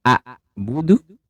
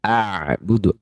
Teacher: Hamzah itu disebut dengan syiddah atau suaranya tertahan